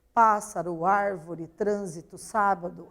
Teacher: basta a gente perceber então que a antepenúltima sílaba é a sílaba tônica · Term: proparoxítonas